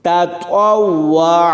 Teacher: تا زبر تا، طوا واو زبر طاو، واو زبر وا، عین زبر ع، تطوع، یعنی تا کو باریک پڑھیں گے اور طوا کو پر پڑھیں گے